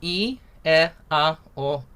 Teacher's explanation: Ukrainian vowels are like Latin or like Italian vowels. They're not diphthonged. So it's just E, E, A, O, U.